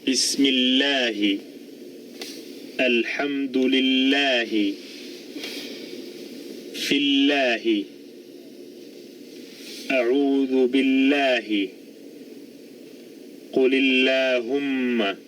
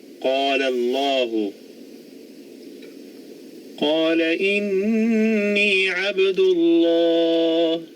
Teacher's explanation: Lam is normally a light letter, the only exception being when it occurs in the divine name Allah. If the divine name is preceded by a kasra, or ya sakina, the lam is pronounced with tarqiq